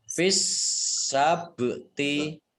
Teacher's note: Minkum fis sabti, alif lamnya alif lam syamsiyah karena tidak dibaca, langsung masuk ke huruf berikutnya yaitu sin, ditandai dengan ada tasdidnya, sinnya dibaca double. Fis sabti, ba sukun bacaan kolkolah dibaca memantul